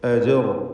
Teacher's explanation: ജീമിൻ്റെ സുക്കൂൻ ഖൽഖല സുഗ്റ നൽകി ശബ്ദം ഹറക്കത്ത് പോലെ ചലിപ്പിക്കണം.